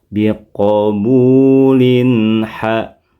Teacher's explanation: Maka pengucapan tanwin in pada biqabulin yang sudah dipertemukan dengan H, bunyinya tidak mengalami perubahan, yaitu sama seperti biqabulin sebelum dipertemukan dengan huruf yang lain. Jelas suara N-nya, tegas dan jelas, dan tidak perlu ditahan lama.